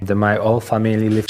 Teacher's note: So instead of whole, with the sound of H, whole, my whole family, he said all